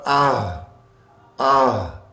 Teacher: اقصی حلق یہ بالکل شروع والا، شروع حلق سے جو سینے کی طرف ہے، اس جگہ سے یہ 2 حرف ادا ہوتے ہیں. آہ، آہ میں جیسے نکلتا ہے نا آہ، تو آپ کو محسوس ہوگا اگر گردن کے یہاں نیچے بالکل نیچے جیسے گڈھا سا ہوتا ہے، اس جگہ پہ انگلی رکھے نا اور آہ آہ، تو یہ آپ کو محسوس ہوگا ہاں یہیں سے آواز نکل رہی ہے.